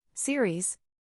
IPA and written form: ˈsɪr.iːz (Series)